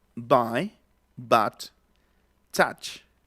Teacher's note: Es una vocal intermedia, ¿no? Está como entre la A y la O.